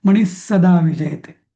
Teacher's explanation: विसर्गानंतर जर स आला तर त्याचा उच्चार डबल स करायचा